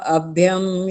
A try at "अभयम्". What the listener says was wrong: हाँ जी अभ्यम नहीं भ पूरा है ना। ये हमने ध्यान रखना यहाँ पर गलतियां हो जाती हैं।